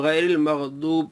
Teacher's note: میرے بھائی، اس کو غیر المغضوب پڑھیں گے، ضاد پڑھیں گے، کیونکہ اس کا مخرج زبان کی کروٹ اوپر کی داڑھوں کی جڑ سے۔ اگر اس کو مخرج سے ہٹا کر پڑھیں گے تو یہ گناہ ہوگا اور یہ حرام ہوگا۔